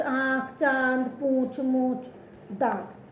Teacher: अनुनासिक में हम जब इस वर्ण का उच्चारण करेंगे तो जो हवा होती है वो हमारे मुंह से भी आती है बाहर और नासिका मीन्स नाक से भी बाहर आती है